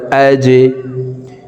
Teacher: জিম কলকলার হরফ তাই নিচের দিকে ধাবিত করে ধাক্কা দিয়ে উচ্চারণ করতে হবে হামজা জিম জবর আজে হামজা হা জবর আহ হার মাখরাজ হলকের মধ্যখান থেকে হবে।